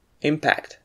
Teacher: if it's a noun it means a collision or world the striking of one thing against another and we stress the first syllable · and we stress the first syllable, impact, like in the following sentences.